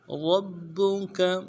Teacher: را کو موٹا ادا کرنا ہے اور را کو زبر کو با کے ساتھ ملانا ہے، با کے اوپر تشدید ہے، زور دیں گے۔